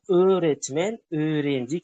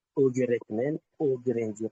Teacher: G'ning bu yerdagi vazifasi o'zidan oldingi unlikni, ya'ni o'zidan oldin kelayotgan unlikni biroz cho'zib o'qish bilan, o'ni cho'zib o'qish. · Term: G tushib qoladi